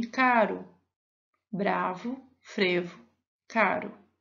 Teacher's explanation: Em bravo e frevo, há a vibrante simples